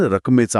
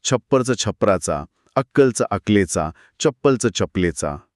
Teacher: जर शब्दाच्या आत डबल कॉन्सोनंट म्हणजे द्वित्व असेल ना, तर त्यातलं एक अक्षर चक्क गायब होतं.